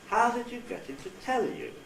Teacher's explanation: with a high fall nuclear tone